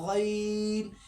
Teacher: جب ہم غین نکالیں گے تو تھوڑا جہاں سے ہم عین نکالتے ہیں اس سے تھوڑا سا اوپر سے ہم غین نکالتے ہیں، ٹھیک ہے۔ اس کو گین نہیں بولنا ہے، اس کو بولنا ہے غین۔